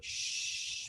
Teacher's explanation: so my lips are rounded